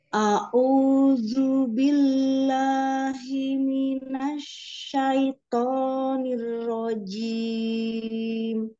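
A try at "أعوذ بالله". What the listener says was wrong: Ya, Masya Allah, untuk ta'awudznya di zal. Zal, ujung lidah ke belakang gigi seri atas atau seperti agak digigit ya. A'udzu, jangan sampai tadi agak ke bawah itu ya lidahnya. A'udzu, a'udzu billah. Yang ke atas lidahnya. A'udzu. Ya, a'udzu. Ya, nanti dilatih lagi zalnya karena untuk membiasakan ya ujung lidah jangan sampai ke gigi seri bawah tapi ke atas. A'udzu. Kadang ada yang digigit ya. A'udzu.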